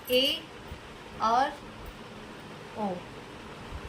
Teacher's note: अर्ध संवृत, इन वर्णों का उच्चारण करते समय मुख संवृत की अपेक्षा थोड़ा अधिक खुलता है